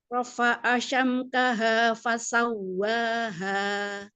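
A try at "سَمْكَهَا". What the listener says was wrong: Sininya sam, bukan syam. Sam.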